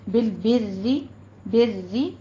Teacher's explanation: را مرقق ہے، را باریک پڑھنی ہے